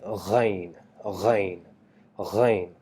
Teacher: We have a gha that starts, the sound comes from the end of your mouth and the beginning of your throat, by vibrating that part a little bit while trying to produce the sound G by saying ghain, ghain, ghain.